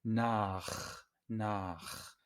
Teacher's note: A es una vocal posterior, entonces la CH, la combinación CH se pronuncia muy fuerte.